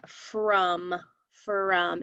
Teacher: the tricky part is that the o sounds like an uh like a u sound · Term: uh sound